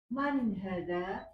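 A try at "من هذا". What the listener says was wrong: Hanya panjang.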